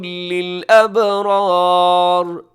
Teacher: آگے، وما عند اللہ خیر للابرار، ابرار اس میں را پر رکھیے گا، آخر میں را ساکن ہوگی، وہ بھی را پر پڑھی جائے گی، یعنی موٹی پڑھی جائے گی